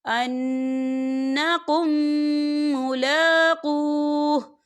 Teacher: یہ دیکھیں آپ کو چھوٹی سی توہیں بھی نظر آ رہی ہے، تو یہ وقف مطلق کی علامت ہے، تو یہاں پر ٹھہرنا بہتر ہے۔ وقف کی صورت میں ہا جو ہے وہ ساکن ہو جائے گا